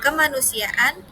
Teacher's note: Kata berakhiran vokal A ditambah ke an, maka akan ada penambahan konsonan glotal. Misalnya pada kata kemanusiaan menjadi ke plus ma plus nu plus si plus ya glotal plus an.